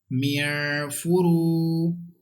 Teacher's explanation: And there is vaw madda, there is pesh before this vaw sakina, and we have to stretch equal to one alif.